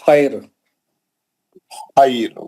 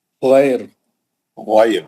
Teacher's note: حالانکہ تیسرے حرف پہ زبر ہے لیکن بیچ والا حرف یا ساکن رہنے سے یہ را جو ہے باریک اور پتلی پڑ جائے گی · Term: پتلا پڑھنے